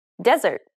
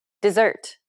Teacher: It's because of stress. In desert, the first syllable is stressed, whereas dessert, the second syllable is stressed.